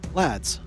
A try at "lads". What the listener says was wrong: Lads. You got to say like not air, because I don't know. You put a really weird sort of sound on the A.